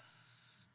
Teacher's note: سین میں ہمس آ گئی، یعنی کہ سانس جاری رہتا ہے، اس. اور صاد میں بھی ہمس ہے، سانس جاری رہتا ہے، اس.